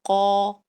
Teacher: कौफ में आप हलक के हिस्से का इस्तेमाल करते हुए जबान और होठों को गोल करेंगे। ठीक है, तो आवाज मोटी हो जाएगी, कौ।